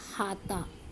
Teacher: अहाते का अ लोप हो गया तो बचा हाता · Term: आदि स्वर लोप